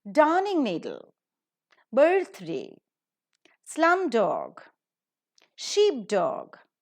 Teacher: the stress is always on the first syllable